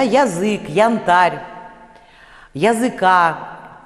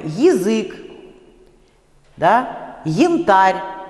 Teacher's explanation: Здесь надо произносить не близкий к «а» звук, то есть не крышечку, да, а «и» с призвуком «э»